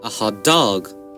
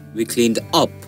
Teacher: The third syllable will get stressed. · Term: first stress pattern